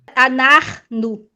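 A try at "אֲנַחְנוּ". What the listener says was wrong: Isso, anarno. Anarno.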